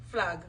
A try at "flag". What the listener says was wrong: Boy, you drag out your ag. Yeah, not ah. Flag.